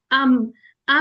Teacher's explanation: जब दोनों खुश्क होंठ का जो खुश्की वाला हिस्सा है वो आपका पहले मिले और फिर अलग हो जाए, यानी कि मीम अदा होता है · फितरी गुन्ना होता है। ठीक है, अम जी नाक में जी। आवाज जाती है